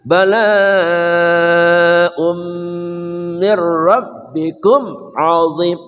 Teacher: tanwin bertemu mim, namanya idgham bi gunnah, dengung ya